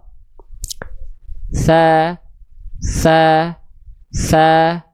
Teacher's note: Tsa dilafalkan dia harus hams dan rakhah mengalir nafas dan mengalir suara ya. Mengalir nafas dan mengalir suara.